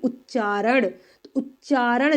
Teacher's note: च पर मैंने ज्यादा जोर दिया है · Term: बलाघात